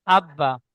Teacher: প্রথমে বা ঠিক এমনভাবে সাকিন নিয়ে পড়বো একবার তারপরে বা অক্ষরটি আরো একবার পড়ব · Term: তাজদিদ